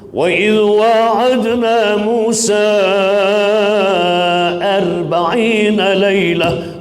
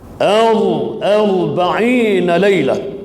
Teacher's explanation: Tuan-tuan sebut bagi sempurna ra tu wajib tebal. Nah, jangan sebut wa idh wa'adna Musa 40 lailah, artinya tak sempurna ra tu tebal.